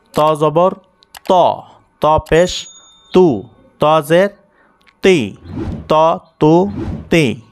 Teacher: তা জবর তা হয় আর ত জবর ত হয়। জবরে আকারের মতন উচ্চারণ হবে না।